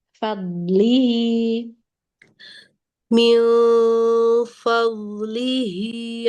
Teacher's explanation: Karena punya sifat rokhwah. Jadi dia agak lama di penekanan makhrajnya